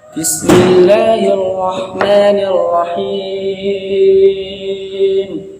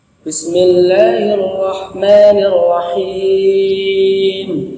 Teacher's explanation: Ini yang salah. Ini mengeluarkan makhraj huruf H lewat tenggorokan dan juga lewat hidung. Padahal setiap huruf itu hanya mempunyai satu tempat keluarnya, tanpa terkecuali mim dan nun.